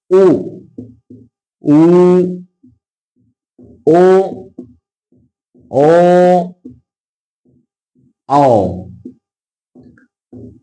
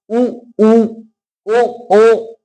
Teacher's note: जिनके उच्चारण में हमारे होठों की स्थिति गोल होगी। होठों को जब हम स्वर बोलेंगे तो होठों की जो आकृति होगी वो गोलाकार होगी, वो होंगे व्रतमुखी।